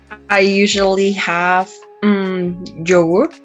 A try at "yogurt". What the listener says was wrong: And be careful with the Y sound. Yeah, yeah, not G. In Spanish, we use G. But in English, yeah, yeah, yeah. Yogurt, yogurt.